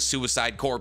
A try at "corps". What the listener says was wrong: Oh, pronounced it corpse, not core. Time to send an angry email.